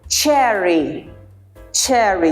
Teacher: J CH and J when you articulate the word Cherry Cherry you see there's a narrow opening and there's a friction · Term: affricate consonants